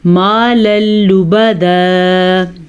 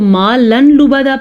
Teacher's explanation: لام آنے کی وجہ سے نون تنوین ختم ہو گیا تو لام کو لام سے ملا دیں گے، نون تنوین کی آواز ختم ہو جائے گی۔ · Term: ادغام بلا غنہ